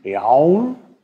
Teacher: Und dann haben wir biau, da haben Sie schon das U, biau, und dann bleibt biau übrig. Das L wird vokalisiert. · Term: Vokalisiertes L